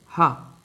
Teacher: व्यंजन हिंदी वर्णमाला में हा को काकल व्यंजन कहते हैं क्योंकि इसका उच्चारण स्थान कंठ से थोड़ा नीचे होता है